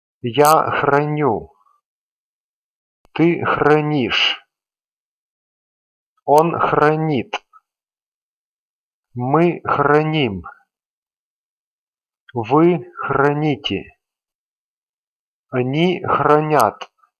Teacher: And again, the stem is same in all forms. As they form has its ending stressed, all the other endings will also be stressed.